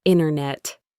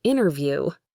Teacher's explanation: In the United States, this happens a lot with words like internet, which often becomes internet or interview, which can sound like interview. The T sound just vanishes.